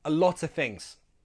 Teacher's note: So that is very common in fast speech. We just drop that last F, make it a schwa sound.